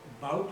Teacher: ये जो letters हैं ना, ha, ba, इनके ऊपर emphasis जो है ना, you put a jhatka emphasis on it, a jerky emphasis on it, and open your vowels, O's and U's, so expand them, So when you say bout, you say bout, right? So ba पे आपने strike किया, O को आपने extend किया.